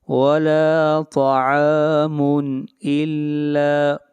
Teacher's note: یہاں پر تنوین کو ظاہر کر کے پڑھیں گے، اس لیے کہ تنوین کے بعد حمزہ ہے اور حمزہ حروف حلقی میں سے ہے، اس لیے یہاں پر اظہار حلقی ہوگا۔